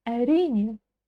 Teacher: в Казахстане я очень часто слышу именно, когда ударение стоит на втором слоге.